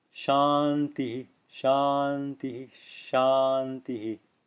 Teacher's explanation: Visarga at the end of a sentence produces a very audible h, followed by a short, soft echo of the preceding vowel.